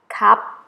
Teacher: Thai people say cup without รอเรือ or R sound